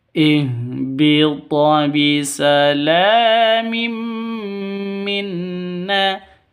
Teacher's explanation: Tanwin bertemu dengan mim. Cara bacanya masuk ke mim disertai dengung dua ketukan karena bacaan idgham bigunah. Dengung dua ketukan.